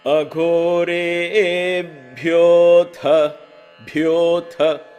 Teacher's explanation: Emphasis on both bhyo and tha.